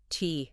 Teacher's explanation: when you say the T sound, your tongue briefly touches the roof of your mouth, stopping the air before releasing it.